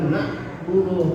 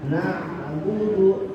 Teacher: na ain ini kalau disukun maka jangan ditahan, jangan nabuduh tapi na na enggak agak mengayun sedikit.